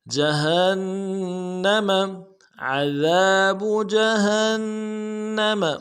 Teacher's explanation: گے، عذاب جہنم جیم کو نرم سے ادا کریں گے، ہا کو نون کے ساتھ ملانا ہے، نون کے اوپر تشدید زور دیں گے